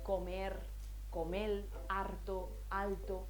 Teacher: no se cambian todas las rres por eles solamente las que están en posición implosiva O sea a final de sílaba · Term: lambdacismo